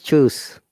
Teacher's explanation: when you're using s the s sounds like z